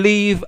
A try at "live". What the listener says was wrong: Man, work on your accent. It's pronounced live, not leave.